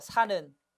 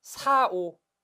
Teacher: 어간 리을 다음에 니은, 리을, 비읍, 오, 시 이들 말이 오면 리을은 탈락합니다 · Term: 용언 어간의 리을 탈락